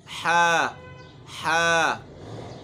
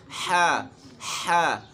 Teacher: ये हा अदा होती है हलक के दरमियान से। वस्ते हलक, वस्ते हलक यानी हलक का वो हिस्सा जो दरमियान में है, हम नोट करें, या जो हड्डी निकली होती है इसमें, इससे आइन और हा अदा होते हैं।